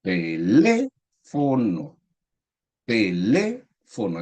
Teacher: Teléfono, es decir, la sílaba tónica está ubicada en la tercera sílaba de derecha a izquierda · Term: palabra esdrújula